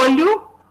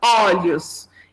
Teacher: Esse O fechado, depois o O aberto. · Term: alternância vocálica